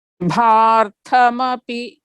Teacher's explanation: Again, tha is Mahaprana, okay?